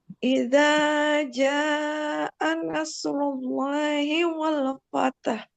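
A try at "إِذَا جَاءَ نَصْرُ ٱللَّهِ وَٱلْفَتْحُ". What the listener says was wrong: Ya, jnya terakhir panjangnya panjangkan lagi sedikit ya.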